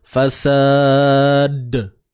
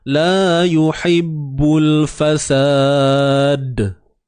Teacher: di hujung pada sebutan dal itu terdapatnya sifat lantunan. Qalqalah, ada qalqalah, sifat lantun. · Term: Qalqalah kubra